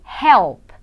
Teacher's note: Som do P não tem vibração.